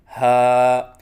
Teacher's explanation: ہا کو اقصائی حلق سے ادا کریں اور اس کے بعد پھر منہ کھولیں، کیونکہ ہا دو حرفوں سے مرکب ہے، ہا اور الف کی ادائیگی منہ کے کھولنے سے ہوتی ہے، اور ایک الف کے برابر لمبا کر کے پڑھیں جیسے ہا، نہ ایک الف سے کم ہو جیسے ہا اور نہ ایک الف سے زیادہ ہو جیسے ہا۔